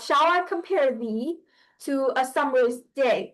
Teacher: An iambic is basically, okay, so if you have a foot, right, 2 syllables, the first syllable is unstressed, and then the second syllable is stressed, then that is an iambic foot